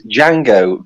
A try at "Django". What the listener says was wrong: Yeah, it is Django. It is pronounced Django. You do not pronounce the D. Django Fett, you don't pronounce the D.